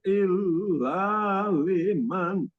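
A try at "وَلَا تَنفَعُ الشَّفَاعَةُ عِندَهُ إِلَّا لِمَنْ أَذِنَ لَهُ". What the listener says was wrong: synya itu snya ee harus beda, Pak. Harus beda dengan ya.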